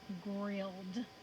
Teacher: we have a consonant that vibrates that's right in front of suffix e d then suffix e d is going to pronounce d we do not hear the e